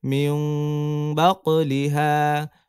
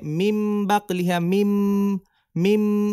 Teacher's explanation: ইকলাবের গুন্না করার সময় সম্পূর্ণ মিম পড়া যাবে না সামান্য মিমের ঘ্রাণ থাকবে